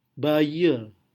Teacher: Jadi ini schwa yang bergandengan dengan R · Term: intrusion approximant